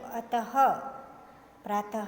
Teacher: कंठ से मतलब हमारे गले से इस विसर्ग का उच्चारण होता है